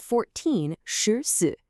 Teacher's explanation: The key is just to listen for the context. If you hear that sh sound right before it, you know it means 10 4, which is 14.